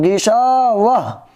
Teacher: اگر یہاں آیت کریں گے، سانس توڑیں گے، اگر آپ رکنا چاہیں گے تو اس کو بولیں گے گشا واہ، آخر میں ہا کی آواز آنی چاہیے۔ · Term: گول تا